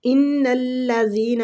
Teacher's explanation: نون مشدد پہ غنہ کریں گے، غنے کی مقدار تقریباً 2 حرکات ہے